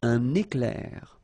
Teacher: So you can see I make this little liaison between the two.